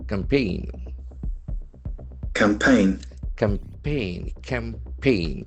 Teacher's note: that is a very important noun having the accent on the second syllable.